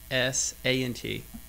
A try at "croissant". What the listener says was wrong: Wrong. 2 S's. Croissant. Close, though.